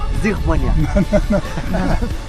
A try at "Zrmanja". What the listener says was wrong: Just leave it like, don't push it. It's Zrmanja.